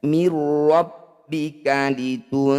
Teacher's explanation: Mir rabbika litunzira, nun sukun bertemu dal disebut bacaan ikhfa awsat. Cara bacanya bunyi nun sukun dengungkan 2 harokat. Ketika dengung, lisan kita sudah ada di huruf dal, bersiap bunyikan huruf dal.